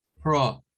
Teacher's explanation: es el sonido para una letra O, pero no es la O, sino que es esa que suena como entre una A y una O. Pro. No es como decir pro, porque nosotros decimos pro, pero en inglés es pro.